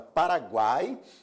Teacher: Aqui nós temos a semivogal U, a vogal A e a semivogal I. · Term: tritongo